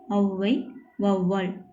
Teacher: தனியாக வரும்போது 2 மாத்திரை அளவில் ஒலிக்கிறது. ஆனால் சொல்லுக்கு முதலில் வரும்போது 1.5 மாத்திரை அளவினதாய் குறைந்து ஒலிக்கும் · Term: ஔகார குறுக்கம்